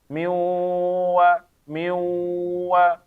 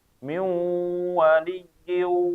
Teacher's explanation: Nah, ini wawunya jadi gunnah ya. Wawunya jadi gunnah. Kenapa? Karena ada huruf nun.